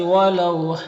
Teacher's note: واو ساکن سے پہلے لام کے اوپر زبر ہے تو واو لین ہوگا، اسے نرم آواز کے ساتھ جلد پڑھیں گے